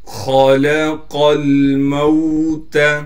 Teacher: خا کو موٹا کر کے پڑھیں گے، لام باریک پڑھا جائے گا، قاف بھی موٹا کر کے پڑھنا ہے۔ دونوں موٹے حرفوں کے درمیان لام باریک ہے، اس بات کا خیال کرنا ہے۔